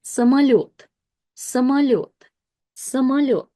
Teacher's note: O, when it's not stressed will be pronounced as a · by itself, we pronounced it as mo, but within this word, o switches to a, so we'll pronounce it as самолет, самолет, самолет.